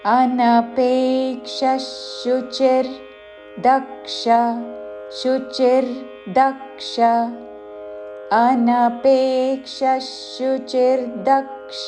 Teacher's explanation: విసర్గ ఉచ్చారణ తాళవ్య ష పక్కన షాతో పదము మొదలవుతున్నది కాబట్టి ష ఉచ్చారణ